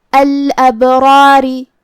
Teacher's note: را پہ زبر ہے تو یہاں را کا حکم ہے تفخیم، مطلب ہمیں را کو بھاری آواز میں پڑھنا ہے · کلمت الابرار میں یہاں با پہ جزم ہے، یہاں با کا حکم ہے قلقلہ. قلقلہ کا معنی ہے حرف ساکن کو ہلانا، تو ہمیں با کو ہلاتے ہوئے یہ کلمہ کو ادا کرنا ہے